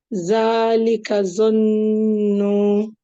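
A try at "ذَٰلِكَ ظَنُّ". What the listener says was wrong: Yeah, so that noon gunna has to be made for 2 seconds. I think you didn't do the gunna sound, you did the shadda, but not the gunna.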